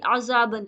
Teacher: عین کی ادائیگی بھی حلق کے بیچ والے حصے سے کریں گے